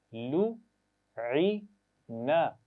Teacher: عین کے مخرج کا خیال رکھنا ہے, حمزہ کی آواز نہیں ادا کرنی, یہاں پر ای نہیں پڑھنا, بلکہ درمیان سے گلے کے مخرج تو آپ کو یاد ہے, درمیان سے آواز ادا ہوگی عی